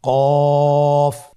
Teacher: কফের মাখরাজ হলো জিহ্বার গোড়া তার বরাবর উপরে তালুর সঙ্গে লাগিয়ে উচ্চারিত হয়।